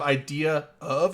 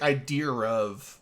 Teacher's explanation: when you have a word end in a vowel and the next word start a vowel you add an R between so instead of idea of you're like idea of can you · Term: intrusive R